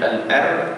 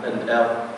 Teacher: huruf raw itu dibaca dengan tebal sebab sebelum dia ada huruf yang bagi hantahnya.